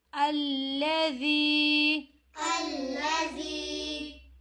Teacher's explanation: زال نرمی کے ساتھ دو دانتوں کے درمیان جو ہے زبان کو رکھتے ہوئے